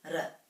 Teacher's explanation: The R in Māori is a little bit rolled